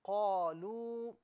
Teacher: واو کو دونوں ہونٹوں کی گولائی سے ادا کیا جائے گا